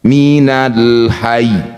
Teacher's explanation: Maka huruf ya ini harus dibaca kuat atau ditekan sebelum dihentikan. Ini kasrah berbunyi minal hayyi. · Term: tasdid